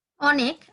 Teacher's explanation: অধ্বনির উচ্চারণ যদি অয়ের মতোই থাকে তাহলে তাকে বিবৃত বলে।